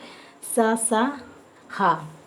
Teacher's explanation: और सा, सा, हा, पहला सा आपका तालव्य सा है, और दूसरा सा मूर्धन्य सा है, और तीसरा सा दंती सा है, और हा, ये चारों ऊष्म वर्ण में आते हैं। क्यों? क्योंकि इनको जब बोलते हैं तो गर्म वायु मुंह से निकलती है